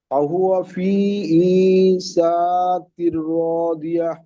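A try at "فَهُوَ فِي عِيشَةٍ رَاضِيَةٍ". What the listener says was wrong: এই যে সা বলে টান দিয়ে ফেলেন, এখানে দেখেন শিন জাবার সা, হারাকাত আছে, হারাকাতে টান হয়ে যায়।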